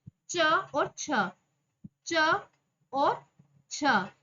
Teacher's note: इन दोनों का उच्चारण स्थान है तालू और आभ्यंतर प्रयत्न है स्पष स्पष्ट तो य दोनों में यह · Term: सवर्ण